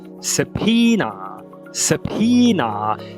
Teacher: O fonema de número 22 é a nossa consoante occlusiva bilabial desvoziada.